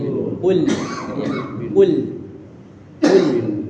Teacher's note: L-nya di lidah kita di belakang gigi seri atas